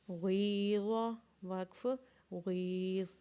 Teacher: غین یا زیر غی، ضاد زبر ضا، غیظ، وقف غیظ۔ غین کو یا کے ساتھ ملانے کے بعد اسے ایک الف کے برابر کھینچیں گے، اور ضاد کے اوپر زبر۔